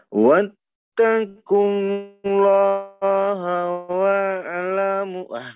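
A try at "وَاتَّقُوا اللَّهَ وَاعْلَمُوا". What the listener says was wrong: jangan mantul. Bisa ya, jangan dibuka iya, tapi jangan mantul gitu poinnya ya. Jangan terlalu dibuka, yo. Lagi-lagi dibuka. Ingat, sekarang oh ya ain, jangan dibuka gitu dulu ya, intinya jangan wa. Ini terlalu dibuka, betul enggak Bang Budi terlalu membuka mulut tuh?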